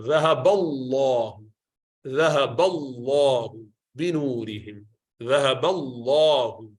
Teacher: Lam of Allah, is pronounced with full mouth. So when it is preceded by a fatha or dhamma letter, zabar or pesh letter, ذهب الله, ذهب الله بنورهم, ذهب الله, okay, not ذهب الله, ذهب الله, okay, like that.